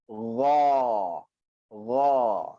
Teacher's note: Jangan munculkan bibir kita sampai keluar huruf O. Kita tak nak O. Kita nak A.